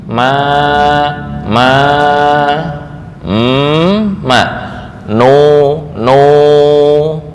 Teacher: Nun sukun atau mim dalam keadaan ringan tapi tetap memiliki ghunah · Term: mutaharrik mukhafaf